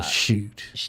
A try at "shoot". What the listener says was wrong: But it's shoot. You gotta really you gotta let that thing carry out a little bit. Really pronounce those O's.